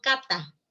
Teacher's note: el ápice de la lengua se pega a los dientes, ¿no? A la parte posterior de los dientes. Se pega ahí. Se pega y cuando sale el aire hay una explosión.